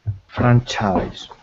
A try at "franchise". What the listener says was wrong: So it's an I at the end, and the S is a Z.